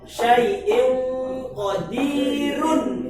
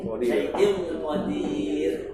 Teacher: Secara tertulis ada tanwinnya, tapi bacanya nggak pakai tanwin. Itu namanya sukun aridah.